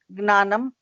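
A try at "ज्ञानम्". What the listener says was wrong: Not gnanam. Very many devotees say gnanam. It's gyanam. The N is not spoken. Gyanam.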